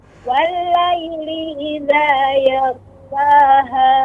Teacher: Suaranya naik karena memang ghain ini salah satu huruf isti'la.